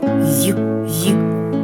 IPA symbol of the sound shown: йʼ